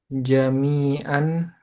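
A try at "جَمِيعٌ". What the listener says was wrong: jami'an. Kalau jami'an, penulisan fathah tanwin begini. Harus disertai dengan alif. Nah, berarti ini bukan fathah tanwin nih. Jami'ah gini.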